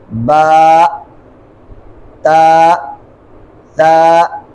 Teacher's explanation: آخر پہ ہا ساکنہ حمزہ ساکنہ بھی نہیں پیدا کریں گے